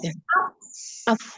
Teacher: Hamzahnya adalah siddah. Berarti suaranya tertahan, langsung masuk ke sukun fa.